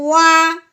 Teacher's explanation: عربی کا جو واؤ ہوتا ہے اس کو ہم نے ہونٹوں سے پڑھنا ہے، دانتوں سے ہرگز نہیں پڑھنا